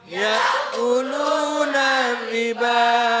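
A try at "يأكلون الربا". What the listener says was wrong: Tadi ro-nya ditasjid sama dengan lam, maka dibaca lupa lagi. Lupa lagi lagunya. Nariba. Nah, ro-nya kudu terdengar sampai satu kali. Ya, jangan kebanyakan ro-nya. Ntar nggak boleh kebanyakan, ya.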